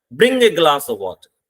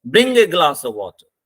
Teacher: वाटर तक आते हुए हमारी आवाज गिर जाती है, इसे कहते हैं फॉलिंग टोन.